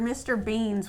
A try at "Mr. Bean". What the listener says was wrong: No, who the hell's Mr. Beans? I know who Mr. Bean is. His name is Mr. Bean, not Beans. There's not multiple of him, there's just one.